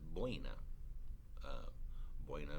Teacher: it's a diphthong because it's a weak vowel and a strong vowel put together and it doesn't matter what the order of the two is